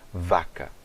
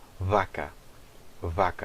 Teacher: Em português nós fazemos aquele som de V lábio-dental